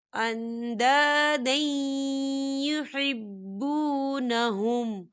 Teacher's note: من دون اللہ اندادا یحبونہم، یا دیکھیں اندادین، دال کے اوپر تنوین ہے اور تنوین کے بعد جو ہے یا آ رہا ہے، اور یا جو ہے حروف یرملون میں سے ہے تو یہاں پر ادغام ہوگا تھوڑا سا غننے کے ساتھ